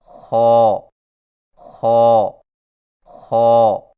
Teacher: خا کی ادائیگی میں زبان کی جڑ کو تالو کی طرف بلند کرتے ہوئے موٹی آواز میں پڑھیں